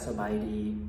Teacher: So the first part of the word สบายดี สบายดี is the same tone. It's a flat tone. It doesn't change. It doesn't go up or down. So you can't say like สบายดี or สบายดี It needs to be สบายดี Then the second part ไหม ไหม is an upward rising tone.